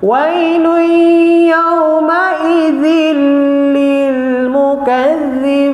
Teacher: zil ada nabar, ada intonasi. Lil tak ada. Sebab lil dia bukan sabdu.